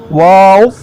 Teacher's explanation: वाव दोनों होंठों की गुलाई से अदा होता है